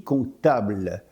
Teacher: le P de compter s'est fait discret jusqu'à disparaître à l'oral.